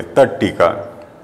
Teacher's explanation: जहाँ त का मेल ट से या ढ से होने पर ट टमाटर का हो जाता है, तो इसे तत् धन टीका को हम टट्टी का बोलेंगे, तट्टी का।